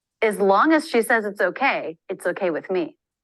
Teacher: drop it's just a quick quick vowel before the z sound to make the Z the tongue tip is forward and down Z teeth are together and Buzz the vocal cords